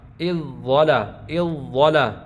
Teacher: ہم اذ یہ ضا موٹا پڑھ رہے ہیں · ہم درمیان میں ذال کو نہیں پڑھ رہے